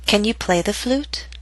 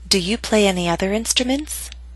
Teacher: remember that your voice must continue to rise until the very end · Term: Rising intonation